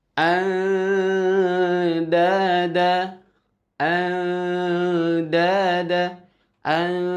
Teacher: ketika kita membunyikan suara nun, nun sukun, maka posisi lidah kita itu sudah berada di makhraj huruf da, ta, th. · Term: ikhfa aqrab